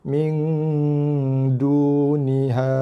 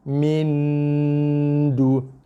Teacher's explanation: So dengungannya akan berbunyi, akan keluar bunyi dengungnya di rongga hidung. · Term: dengung ikhfa hakiki